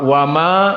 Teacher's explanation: wau di sini harf murqqoh dan Ma kadalik muraqoqoh